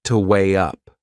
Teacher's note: There is another linking sound in that phrase. To weigh up, can you hear it? We insert a little Y sound.